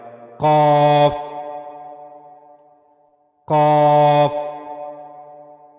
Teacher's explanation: तो इस तालू का जो नरम हिस्सा है सबसे नीचे वाला वहां से काफ को अदा किया जाएगा। ठीक है? यहां से काफ को अदा किया जाएगा। · منہ کے نرم تالو والا اوپر کا حصہ یعنی جو سب سے نچلا حصہ ہوتا ہے اس کا وہ نرم والا ہوتا ہے, وہاں سے قاف کو ادا کیا جائے گا